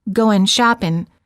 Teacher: the tip of the tongue is touching the area right behind the upper front teeth for the n sound